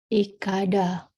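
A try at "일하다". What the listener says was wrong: Ilhada. Karena yang aku lingkari itu adalah huruf real. Bunyinya L atau L.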